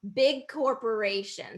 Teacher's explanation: g and k are produced in the back of the throat same position